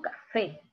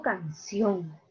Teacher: En primer lugar, las oxítonas se denominan agudas o ictiúltima. Tienen la sílaba tónica en el último lugar. Quiere decir que al final está la mayor fuerza de voz.